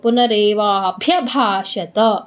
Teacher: ಪುನರೇವಾಭ್ಯ ಮಹಾಪ್ರಾಣ, ಭ್ಯಾನು ಮಹಾಪ್ರಾಣ, ಭಾನು ಮಹಾಪ್ರಾಣ, ಒತ್ತಿ ಎರಡು ಒಟ್ಟಿಗೆ ಒತ್ತಿ ಹೇಳ್ಬೇಕು